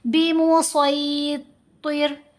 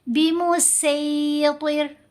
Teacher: صاد کی آواز موٹی ہوتی ہے، سین کی آواز باریک ہوگی